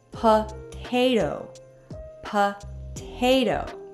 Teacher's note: did you hear how the second T in potato sounds a bit like a soft d